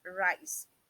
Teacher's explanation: you can perceive or hear the vibration the tip of the tongue vibrates